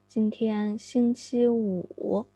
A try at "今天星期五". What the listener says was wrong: 今天 raise the tone, please. Now, when you want to get the tone right, it is very important to remember the tone value, pitch value.